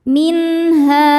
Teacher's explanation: Min ada idhar halqi karena ada nun sukun bertemu dengan huruf halqi atau tenggorokan yaitu ha. Cara bacanya nun dibaca jelas.